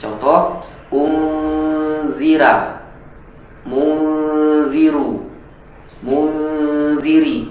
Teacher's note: Contoh riwayat Warsh dalam pengucapan huruf ro, harokat apapun dia, kalau sebelumnya kasroh dia menjadi tipis.